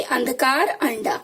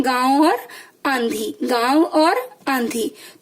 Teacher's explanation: अनुस्वार का उच्चारण जो है वो केवल नाक से किया जाता है, अनुनासिक का नाक एवं मुंह दोनों से किया जाता है